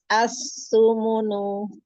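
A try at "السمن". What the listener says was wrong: Su. Monyong lagi. As-sumunu.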